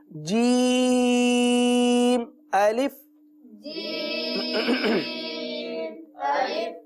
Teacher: जबान का पेट और तालू का दरमियाना हिस्सा ये दोनों आपस में लगेंगे और जीम का मखरज अदा होगा।